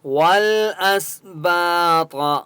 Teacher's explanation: طا مستعلیہ میں سے اس لیے طا کو موٹا پڑھیں گے۔